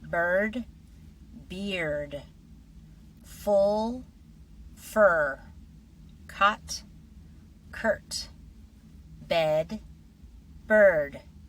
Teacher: Can you hear how the R completely changes the vowel?